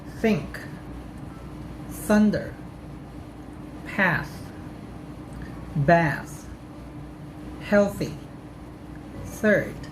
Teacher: your top and bottom front teeth when you make that sound notice that there is no vibration on your vocal cords and you simply blow air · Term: soft th sound